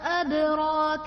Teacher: ادراک میں دال حرف قلقلہ ساکن ہے تو یہاں پر قلقلہ خوب ظاہر ہوگا